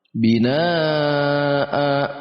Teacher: Binaa itu ada nun berharokat fathah dan dibaca panjang karena ada alif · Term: mad wajib muttasil